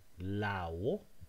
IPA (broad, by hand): laβo